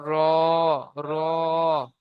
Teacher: জীবের আগার উল্টো পিঠ এবং তার বরাবর উপরের তালুর সাথে লাগিয়ে উচ্চারিত হয় রং মাখরাজ 10 নম্বর মাখরাজ জীবের আগার উল্টো পিঠ এবং তার